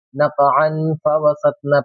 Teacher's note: ناک میں آواز چھپا کے پڑھیں گے، اخفا کریں گے